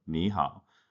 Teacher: ni hao has both the dipping tones on both syllables